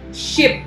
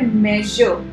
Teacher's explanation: जब हम ship बोलते हैं तो हमारी टंग just behind the alveolar region है। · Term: post alveolar